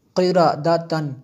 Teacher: میں نے یہاں پہ غنہ نہیں کیا، کیوں کہ تنوین کے بعد خا ہے اور حروف خلقی میں سے۔